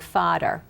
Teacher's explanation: they don't have a th sound instead of saying father they would say like fodder